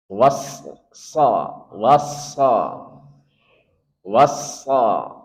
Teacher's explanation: sod itu punya sifat sofir, desis, was, ada desisnya. Kemudian dia punya sifat tafkhim, tebal. Wassa, wassa, wassa, tebalkan.